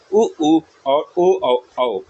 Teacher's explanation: इनका उच्चारण करते समय हमारा जो ओठ की आकृति होती है वो गोल हो जाती है। इसलिए हम लोग राउंड वृत्त मुखी वोवेल्स के नाम से इनको जानते हैं। · ऐसे कौन कौन से वर्णों का उच्चारण करते समय होता है, ये आपका उ और ओ औ, इनका उच्चारण करते समय हमारा जो ओंठ की आकृति होती है वो गोल हो जाती है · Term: व्रतमुखी